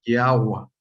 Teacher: la Vao no se pronunciaba como V, sino se pronunciaba como W